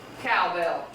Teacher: cow it's stressed and bell is almost stressed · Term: secondary stress